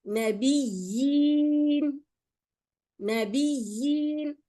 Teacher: But in this case, where you have two yas, you have to pronounce the first ya, and the second ya becomes a madda